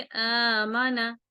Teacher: आ को पहले 2 हरकत पढ़ेंगे, आमना, और माना एक एक हरकत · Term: खड़ी जबर